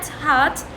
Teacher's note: vowel sound in heart is produced with the tongue in a lower position. يعني اللسان والموقع راح يكون لما ألفظ كلمة heart، لما أقول كلمة heart اللسان راح يكون lower position.